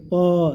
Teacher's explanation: दोनों ओठ सट जाएगा, तो उसको क्या बोलेंगे, ओष्ठ वाला